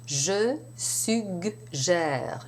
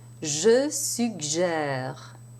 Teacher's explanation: Notice that the first G is hard, the second G is soft, like J.